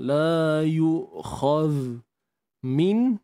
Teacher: Matikan zal ni hujung lidah kena keluar. Hujung lidah kena keluar.